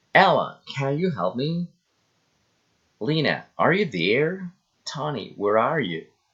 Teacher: direct address rising intonation